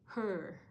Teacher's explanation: Para siyang combination ng O at saka E, no? Pero mas closer, mas tighter, and mas buo yung pronunciation. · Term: O na may dalawang tuldok